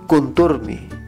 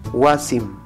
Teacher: este sufijo tiene dos realizaciones mi después de consonante y m después de vocal por ejemplo la palabra Contour termina en consonante por lo tanto